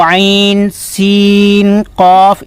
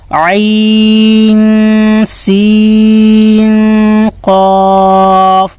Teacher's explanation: عین کو پڑھیں گے تو بھی غنہ کریں گے، اور سین کے بعد بھی جب قاف آ رہا ہے نون سین کے بعد تو یہاں بھی غنہ کریں گے